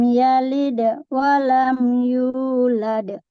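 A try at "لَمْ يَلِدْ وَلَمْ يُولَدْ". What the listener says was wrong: Satu di sini qalqalah sugro. Qalqalah sugro jangan sampai ada jeda. Lam yalid wa lam, itu jeda tuh ya. Ini langsung yalid wa. disebut sugro itu kan ringan. kalau misalkan seperti ini baca lam yalid wa lam, itu kubro, ya. Qalqalahnya jelas banget, ya. Maksudnya berhenti jeda baru masuk ke wawunya.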